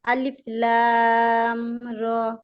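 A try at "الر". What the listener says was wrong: লাম আরেকটু টান হবে, আবার বলেন।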